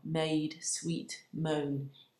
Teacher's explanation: the break in the iambic Rhythm as well made sweet moan each word in that phrase emphasized because it's a stressed syllable